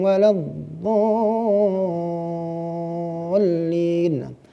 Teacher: Jadi itu namanya mad lazim kilmi musaqqal, wajib dibaca dengan panjang 6 harokat.